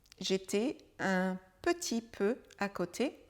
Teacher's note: Le E de petit n'est pas prononcé, il est contracté.